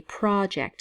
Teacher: in the case of a noun we say project so the emphasis is on the first syllable